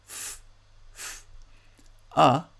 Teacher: And a fricative it's not a stop, but it has a little bit of airflow through a very narrow opening between the lower lip and the upper teeth